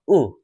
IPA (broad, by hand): ʊ